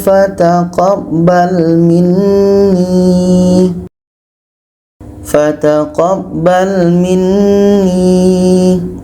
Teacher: ketika berhenti waqaf panjang dua harakat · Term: mad jaiz munfasil